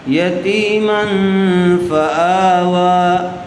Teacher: فآوا حمزہ کے اوپر کھڑا زبر ہے، اور کھڑا زبر برابر ہوتا ہے الف مدہ کے. واؤ کے اوپر بھی کھڑا زبر ہے، اس لیے آ و دونوں کو برابر کھینچ کر پڑھیں گے